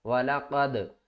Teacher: واو زبر وا، لام زبر لا، والا، قاف دال زبر قد، والا قد، دال ساکن ہے تو دال کے اوپر قلقلہ کریں گے، سب سے نیچے درجے والا۔